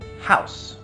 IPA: haʊs